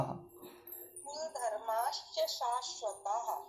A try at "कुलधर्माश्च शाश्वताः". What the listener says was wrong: कुल नहीं, कुल, ला पूरा है।